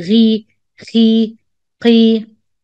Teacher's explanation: We say ghi, khi, qi, not the same tafkhim when you do it with fatha.